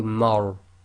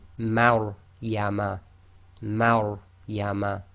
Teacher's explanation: the Ma is light and the Ra is tafkhim, full mouth. So you've got to switch from empty mouth to full mouth very quickly.